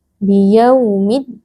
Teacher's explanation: ya sukun yang sebelumnya berharakat kasrah bertemu dengan huruf yang disukunkan karena waqaf yaitu huruf nun, dibaca panjang 2, 4 atau 6 harakat · Di sini ada alif lam asyamsiyah karena alif lam bertemu dengan huruf dal yang merupakan huruf syamsiyah. Lam sukunnya diidghamkan atau dimasukkan ke dalam huruf dal. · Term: mad arid li sukun